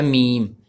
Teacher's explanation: मीम दोनों होंठों की बैरूनी तरी के मिलने से, यानी कि मीम जो सा होता है होंठों वाला जो सा तर हिस्सा होता है ना बैरूनी तरी यानी कि बाई वाला हिस्सा उसके साथ अगर हम मिलाएं तो फिर मीम अदा होता है।